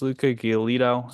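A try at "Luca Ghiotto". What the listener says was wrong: Oh, we talking about Luca Giotto? get the L, bro?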